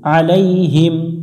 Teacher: আইন এটা গলার মধ্য থেকে একটু চেপে পড়বো